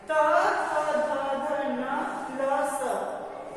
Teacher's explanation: इनका उच्चारण स्थान है दंत। यानी कि जब हमारी जीभ इनका उच्चारण करते समय दांतों को स्पर्श करती है तो इसका जो सूत्र है वो है तलस।